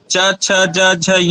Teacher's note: जिह्वा का तालु से स्पर्श होगा